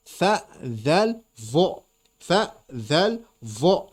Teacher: ujung lidah begitu keluar disentuhkan dengan ujung gigi seri atas